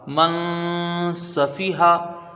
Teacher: میم کو نون سے ملائیں گے، یا نون ساکن کے بعد حروف اخفا کی سین ہے تو یہاں غنہ ہوگا، ایک الف کی مقدار غنہ کریں گے، نون ساکن کی آواز کو ناک میں چھپا کر پڑھیں گے